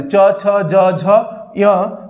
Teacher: तालव्य व्यंजन, जिनका तालु से उच्चारण हो